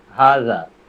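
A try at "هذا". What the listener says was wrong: হাদা, হাদা হাদা, হ্যাঁ হাদা লেখা, কিন্তু এটা আমরা পড়বো হাদা, হাতে একটু টান হবে, হাদা।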